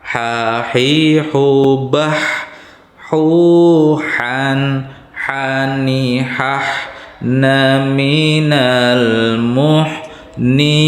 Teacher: Ha kecil itu di tengah tenggorokan